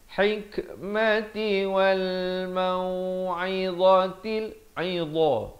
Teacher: Dha di hujung lidah keluar dia bunyi tebal dia.